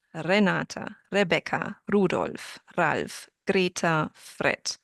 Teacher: A very strong R. Maybe not as strong as a double R in Spanish, but a single R if the R is in the middle and it can be the middle of the word or the middle of the syllable.